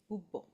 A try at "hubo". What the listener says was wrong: We don't pronounce the H, right? No, it's it's not hub. It's ubo.